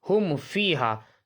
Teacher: کیسے اجرا کریں گے کہ میم ساکن کے بعد, ٹھیک ہے, میم اور با کے علاوہ کوئی دوسرا حرف فا آ رہا ہے, اس لیے اظہار شفوی ہوگا. میم ساکن کو ظاہر کر کے بلا غنہ کے جلدے پڑھیں گے.